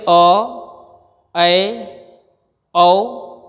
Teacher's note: वह स्वर जिसके उच्चारण में मुख आधे से थोड़ा ज़्यादा खुले, वहाँ पे अर्ध विवृत स्वर कहा जाता है, जो है अ, ऐ, औ और अंग्रेजी से आया हुआ आगत एक शब्द है औ।